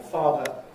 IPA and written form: ˈfɑːdə (father)